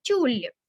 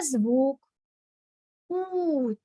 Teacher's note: у - це в нас голосний і оскільки в нас лише один склад він і є наголошеним